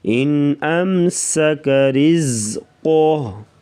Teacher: ان پہ بھی اظہار ہوگا، غنہ نہیں کریں گے